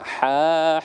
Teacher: makhrajul hurufnya ha ya, di pangkal tenggorokan